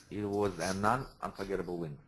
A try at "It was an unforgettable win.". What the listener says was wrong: No, you're saying un twice. Only once. It was an unforgettable win.